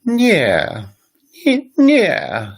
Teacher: So Polish, for example, when you ask someone a question and they answer in the negative, they will answer, yeah. Yeah, so the voice is really high and it drops down quite a bit